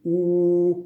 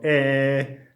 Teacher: the second is how you shape your lips you can say ooh which is a round vowel or a which is a spread vowel